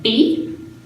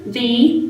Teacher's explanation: B, mouth goes in, V, the teeth come out.